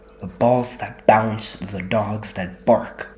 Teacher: The repeated B plosives are percussive and energetic, imitating the thud of balls and the bark of dogs. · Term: plosive alliteration